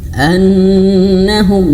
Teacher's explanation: annahum ditahan 2 harokat, dan bahkan harus lebih lama daripada mad tabi'i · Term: mim bertasydid